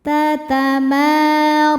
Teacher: Tatamara, ra dibaca tafkhim karena berharokat di atas yaitu fathah. Cara bacanya ditebalkan. Ra dan hukum madnya adalah mad tabi'i muqaddar karena ada baris fathah panjang di atas huruf ra.